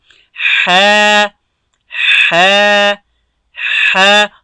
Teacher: دا به د ستوني د منځ په حصه کې ویل کېږي